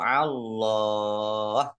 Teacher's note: Allahnya dibaca tebal karena harakat di depannya fathah